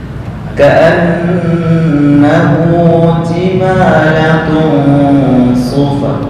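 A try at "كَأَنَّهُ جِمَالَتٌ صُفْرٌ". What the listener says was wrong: Sodnya belum kurang tepat. Sufr. Ka'annahu jimalatun sufr.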